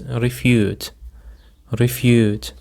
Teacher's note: The stress is on the second syllable, refute.